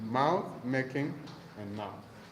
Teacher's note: You also find repetition there in the repetition of the word mouth, and you also find alliteration there in the repetition of the bilabial nasal sound